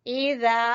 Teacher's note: जाल जबान की नोक और ऊपर वाले दो दांतों के सिरे